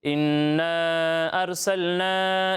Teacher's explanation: نون مشدد میں ہم غنہ کرتے ہیں، یعنی ناک میں آواز لے جا کر اس کی ادائیگی کرتے ہیں